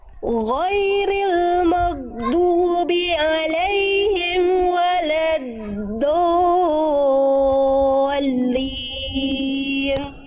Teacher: Nah, nggak boleh amnya berhenti, mim sukun nggak boleh berhenti, nyambung ke walanya. Nggak boleh syiddah, nggak boleh terputus.